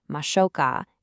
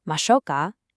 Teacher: To make your offer sound genuinely polite and kind, you need to end the phrase with a rising intonation. So, instead of a flat mashoka, it should sound more like a gentle question.